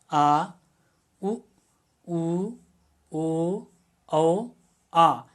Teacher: जिह्वा का पश्च भाग काम करेगा, उसको हम पश्च स्वर बोलेंगे